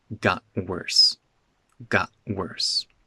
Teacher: The T in got becomes a glottal stop.